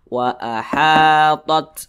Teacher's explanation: panjangnya itu dua harakat atau kira-kira dua ketukan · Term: Mad Thobi'i